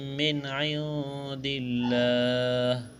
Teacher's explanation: نون ساکن کے بعد دال ہے، اخفا کریں گے، یہاں پر آواز ناک میں چھپائیں گے